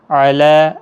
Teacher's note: لام کے اوپر کھڑا زبر ہے، 1 الف کی مقدار کے برابر کھینچیں